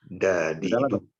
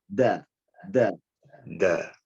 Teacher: Suara dal ini harus dia dimundurkan sedikit antara gigi depan, ya, seri, dan langit-langit yang belakang.